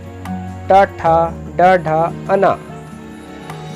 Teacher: इस प्रकार ट वर्ग ट, ठ, ड, ढ, अना को मूर्धन्य कहते हैं। इनका उच्चारण मूर्धा और जीभ से होता है।